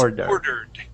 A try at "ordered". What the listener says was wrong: You want to pronounce that D at the end. Right now, it sounds like you're ending on that R, saying order. Okay, order is correct, but if you have an ed there at the end, oops. Okay, you need to pronounce that D. Okay, saying ordered.